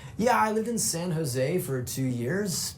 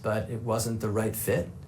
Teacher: My voice is rising at the ends of both those statements. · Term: uptalk